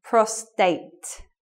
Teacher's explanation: So yeah, this one, just remember, is associated with men and it's a medical word and there's no R. So it should be prostate with no R sound.